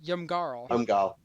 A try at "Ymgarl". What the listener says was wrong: No, because you're adding vowels.